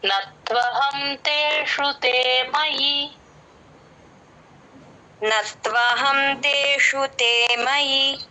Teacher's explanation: మయి అని దీర్ఘం పెట్టేస్తూ ఉంటారు మయి కట్ చేయాలి